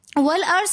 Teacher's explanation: वाव को हम लाम के साथ पढ़ेंगे, जो दरमियान में हमज़ा है उसको हम नहीं पढ़ेंगे